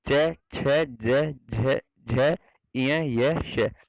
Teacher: तालव्य कौन से, तालव्य मतलब जब जीभ तालु को छूती है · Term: तालव्य ध्वनियां